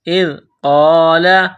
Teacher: زال کو پڑھتے وقت زبان تھوڑی سی باہر نکالیں گے